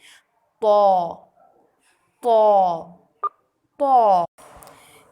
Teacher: Next letter is طا. زبان کی نوک کو سامنے والے دانتوں کی جڑ سے لگا کر جبکہ زبان کے پچھلے حصے کو اوپر کی طرف بلند کرتے ہوئے موٹی آواز میں پڑھیں گے